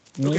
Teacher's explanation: The height is high. The position of the tongue is in the front. The tenseness is tense. Lips rounding is unrounded, and the length is long.